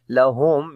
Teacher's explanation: میم ساکن کے بعد را گیا، اظہار شفوی ہوگا، میم کی آواز کلیئر کر کے پڑھیں گے اور میم کے اوپر توسط بھی ہوگا، را کو موٹا پڑھیں